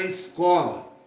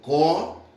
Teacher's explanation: A sílaba tônica é o có.